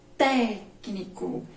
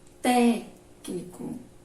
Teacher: E proparoxítona, técnico, é quando a antepenúltima é a mais forte.